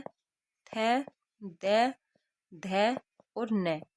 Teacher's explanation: दंत में आता है त, थ, द, ध और न